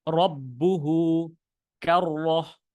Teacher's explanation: র যেন মোটা হয় মোটা হওয়ার জন্য আপনি মুখটা একটু হালকা গোল করতে পারেন